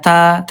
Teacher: huruf ta, ayah bunda, dia tipis ya, dan juga dia alhams, ada udara ya